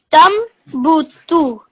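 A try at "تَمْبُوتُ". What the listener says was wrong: And a little bit more flow and hold it on the meme for a second, okay? Tambutu.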